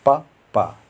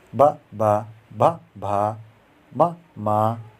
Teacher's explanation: जिन व्यंजन के उच्चारण में दोनों ओष्ठ द्वारा श्वास का अवरोध होता है ओष्ठ व्यंजन कहलाता है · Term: ओष्ठ वर्ण